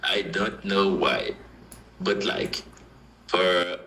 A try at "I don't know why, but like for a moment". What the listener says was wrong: This was perfect.